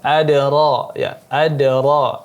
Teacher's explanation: dal di sini qalqalah sughra maka dipantulkan.